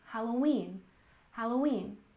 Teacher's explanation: Halloween, with a stress on the last syllable, Halloween, Halloween.